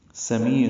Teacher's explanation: سمیع سین صفیریہ میں سے ہے، صفیر کی آواز سے، سیٹی کی آواز سے، پتلی باریک آواز سے ادا کریں گے. می یا مدہ ہے، دو حرکات لمبا کریں گے، عین واسطے الگ سے ادا کریں گے.